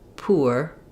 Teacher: The w should just happen because you're starting off with a very round, tense oo sound. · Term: w glide